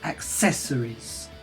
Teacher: stress the second syllable the syllable after the apostrophe